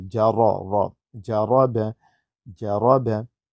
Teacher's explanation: रा को अदा करते हुए अगर उस पर ज़बर है तो उसको मुफखम पढ़ेंगे, मोटा मुंह भर के पढ़ेंगे